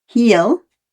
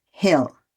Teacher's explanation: Short vowel I can be difficult for some people learning English. In other languages, I becomes E, but it is not heel, it's hill.